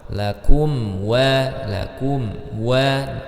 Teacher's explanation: mim sukun bertemu setelahnya huruf wau ya menjadi izhar syafawi